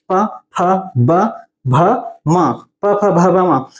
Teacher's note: प वर्ग की बात करें तो ये ओष्ठ है ना, होठ से टच होता है